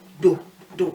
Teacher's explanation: the do, which is the tone that goes down